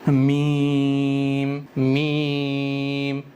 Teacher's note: दोनों होठों के सूखे वाले हिस्से मिलने से मीम अदा हो रहा है · मीम दोनों होंठों की खुश्की के हिस्से से अदा होता है, यानी दोनों होंठों के जो ड्राई वाले सूखे वाले हिस्से हैं उन दोनों हिस्सों के मिलने से मीम अदा होता है।